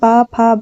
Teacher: इन व्यंजनों के उच्चारण के समय दोनों होठ स्पर्श करते हैं तथा जीहवा निष्क्रिय रहती है। यानी जो ओष्ठ व्यंजन होते हैं जब हम उनका उच्चारण करते हैं तो हमारे दोनों होठ जो होते हैं वो आपस में एक दूसरे को स्पर्श करते हैं और जो हमारी जीह्हा होती है वो निष्क्रिय रहती है। · वे व्यंजन जिनका उच्चारण दोनों होठों से होता है उनको ओष्ठ व्यंजन कहते हैं। इन व्यंजनों के उच्चारण के समय दोनों होठ स्पर्श करते हैं तथा जीहवा निष्क्रिय रहती है।